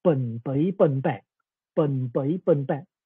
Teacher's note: In Pinghua, usually b becomes unaspirated b in all tones.